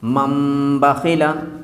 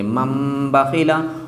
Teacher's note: اقلاب تھا کہ اگر ہم تنوین نون ساکن کے بعد با آ جائے تو تنوین نون ساکن کے نون کو میم سے بدل کر کے پڑھیں گے